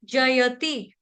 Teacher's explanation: जयति य पूरा विजिबल सुनाई पड़ना चाहिए अच्छे से दिखना चाहिए सुनना चाहिए जयति इसको जैति नहीं कोई पढ़ देगा जल्दबाजी में जयति ते पंजाबियों की तरह डोकरों की तरह नहीं पढ़ना संस्कृत का उच्चारण संस्कृत के भाषा की तरह होना चाहिए जयति ते जयति आपका ह्रस्व है।